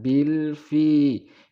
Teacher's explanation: Idhar artinya jelas. Lam tidak boleh mendengung atau juga tidak boleh dipantulkan. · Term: idhar qamariyah